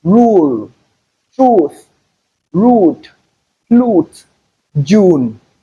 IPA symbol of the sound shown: u: